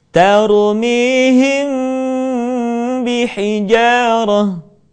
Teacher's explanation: mim mati ketika bertemu dengan huruf ba bibir tidak sempurna rapat melainkan agak direnggangkan sedikit